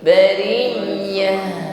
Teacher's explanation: Ya-nya harus tetap ada, bukan putus bari ya, tetapi bariyah. Ditutup dengan huruf tak marbutah, bariyati, maka tak marbutah di sini dibaca sebagaimana huruf ha. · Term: huruf ya